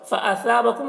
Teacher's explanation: سا کو باریک پڑھنا ہے اور یہاں پر الف مدہ ہے. بکم میم میں اظہار شفوی ہو رہا ہے.